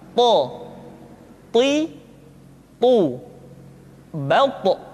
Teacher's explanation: th diucapkan dengan menyentuhkan ujung lidah dengan gusi-gusi dua gigi seri bagian atas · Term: huruf tho, huruf to